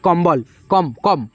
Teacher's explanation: अंग की मात्रा का उच्चारण न भी होता है म भी होता है